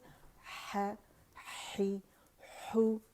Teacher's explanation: है के लिए मैंने बताया था, ज़बान की जड़ जब नीचे होगी, और क्योंकि हमारे लेरिंग्स में आवाज़ बनी हुई है, ठीक है, नरखरे के अंदर हवा उसको लेकर आ रही है, और मिडल थ्रोट से अदा होगा, वसतुल हल्क से, और ज़बान की जड़ को नीचे करेंगे फ्रिक्शन के साथ एयर के, क्योंकि वॉइसेस लेटर है, एयर फ्रिक्शन होगी और है ज़ाहिर होगा, ठीक है।